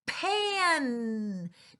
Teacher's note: Notice how I touch my nose on that N sound? See if you can feel it. It really goes through our nose as well.